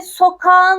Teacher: Sokak kelimesindeki K yumuşak g'ye dönüşüyor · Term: yumuşama